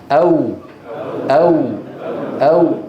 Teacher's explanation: الواو بانضمام الشفتين الى الامام مع ارتفاع اقصى اللسان